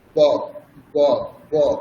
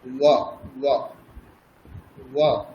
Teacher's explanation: সেটা দুটি ঠোঁট মিলিয়ে আমরা উচ্চারণ করব, ব, ব, ব। আর যখন অন্তঃস্থ ব পাবো, সেটার উচ্চারণ হচ্ছে উপরের দাঁত এবং নিচের ঠোঁট, উপরের দাঁত নিচের ঠোঁট, ও, ও, ও। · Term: বর্গীয় ব